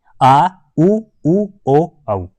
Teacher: जीभ के पिछले भाग से उच्चारण होती है